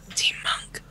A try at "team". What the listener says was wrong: Okay, it's first of all, I know you said team, but it sounded like teen, and for some reason I thought Teen Wolf?